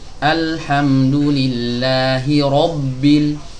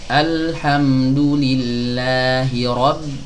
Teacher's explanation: Harusnya ro tebal, ba tipis.